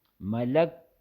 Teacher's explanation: اب کاف میں قلقلہ نہیں ہوگا ملک ہا کی آواز نہ آئے اس میں